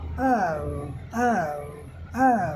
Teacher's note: It move from अ टू ओ यह अ से उ की तरफ मूव करता है।